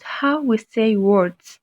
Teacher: i stress the word how because my main point here is the way that we are speaking in english we tend to stress the most important words in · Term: sentence stress